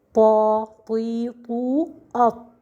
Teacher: here with the ta we have adhesion between the tongue and the upper part of the mouth, which we call in Arabic al-itbaq.